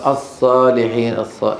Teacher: اضعاف صفير اضعافه يعني نطقه بشكل ضعيف الص بده يقول الصالحين الصص اص مع رخوه فيها صوت متدفق